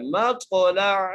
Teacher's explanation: حمزہ نہیں پڑھنا بلکہ عین ہی ادا کرنا ہے